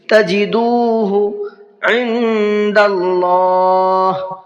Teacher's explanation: تجدوہ، یہاں پر دال کو بھی کھینچ کر کے پڑھنا ہے، اس لیے کہ یہاں پر واو مدہ کا قاعدہ ہے، تجدو پڑھنا، تجدو نہیں پڑھنا ایک دم سے، جلدی نہیں پڑھنا بلکہ کھینچ کے، تجدوہ عند اللہ، نون میں اخفا کریں گے، اس لیے کہ نون ساکن کے بعد میں دال ہے اور دال بھی اخفا کے حرفوں میں سے ہے۔ · خیر تجدوہ، را کے نیچے تنوین ہے اور تنوین کے بعد میں تا ہے، تو تنوین میں اخفا کریں گے، اس لیے کہ تا اخفا کے حرفوں میں سے ہے اور تنوین کے بعد میں آ رہا ہے۔ تجدوہ، یہاں پر دال کو بھی کھینچ کر کے پڑھنا ہے، اس لیے کہ یہاں پر واو مدہ کا قاعدہ ہے